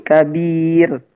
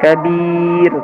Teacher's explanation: ro itu ketika mati dan didahului oleh kasroh, termasuk di sini didahului oleh huruf sukun dan didahului oleh harokat kasroh, maka dibaca dengan tipis